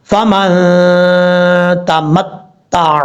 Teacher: نون ساکن کا اخفا، ایک الف کی مقدار غنہ کریں گے، آواز کو ناک میں چھپا کر پڑھیں گے